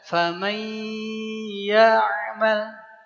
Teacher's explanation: Karena ketemu ya, maka secara hukum nun sukun ketemu ya adalah idgham bi gunnah. Bunyi man dileburkan ke ya-nya menjadi mai.